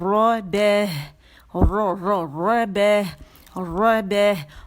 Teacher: را موٹی ہے، مخفف ہے، موٹائی سے پڑھی جائے گی کیونکہ اس کے اوپر زبر ہے. ٹھیک ہے، ظاہری شکل میں ہمیں زبر ہی نظر آ رہی ہے تو اسے زبر کے ساتھ موٹا پڑھیں گے.